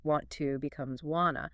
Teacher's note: The T sound at the end of want usually disappears completely, and the vowel sound in the word to, which is normally like you or Not me, deuces.